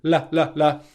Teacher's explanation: the tip of the tongue touches the alveolar ridge right behind your teeth here. That is the same tongue position as the N sound. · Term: L sound